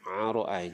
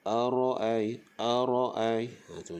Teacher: Arai tu, jangan arai, jangan bunyi ain, bunyi hamzah